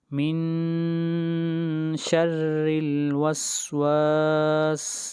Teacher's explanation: را کے نیچے کسرہ ہے اس لیے را کو یہاں پر باریک پڑھیں گے